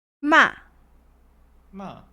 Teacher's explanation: falling tone which starts off very high and falls short and strong